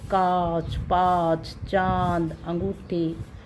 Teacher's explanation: इसका उच्चारण करते समय ध्वनि नाक और मुंह दोनों से निकलती है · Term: अनुनासिक